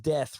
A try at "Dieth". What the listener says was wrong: Dieth, yeah, Dieth. Dieth, yes, exactly. Put the I in death.